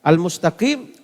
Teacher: Al-mustaqim alif lam qamariyah, qaf ditebalkan. Al-mustaqim kalau wakaf ma'arik li sukun.